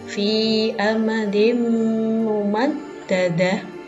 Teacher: Idgham bi gunnah adalah apabila ada nun sukun atau tanwin bertemu dengan salah satu huruf ya, nun, mim, atau waw. Maka cara membacanya dengan mendengung 2 harokat atau 2 ketukan.